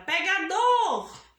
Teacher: a sílaba tônica é o dor né então ocupa o último lugar da sílaba é classificada como oxítona